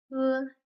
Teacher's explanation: T is like the English T, but as it goes with the p sound, it's stronger and it makes some air flow out. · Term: t sound